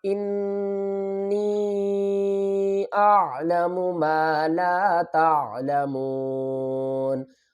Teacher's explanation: حمزہ کو نون سے ملائیں گے، گننا بھی کریں گے، اور آگے یا کے اوپر مد بھی آ رہی ہے تو کھینچ کر پڑھیں گے۔